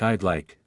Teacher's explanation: the I would becomes i' and flows into like